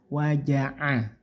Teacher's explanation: jimnya tidak pakai angin banyak